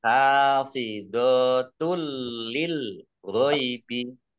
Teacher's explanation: Domah tanwin bertemu dengan huruf lam, bacaan idgham bila gunnah, masuk dengan tidak mendengung, yaitu langsung masuk ke huruf lam, ditandai lamnya ada tasdidnya, tetapi tidak mendengung.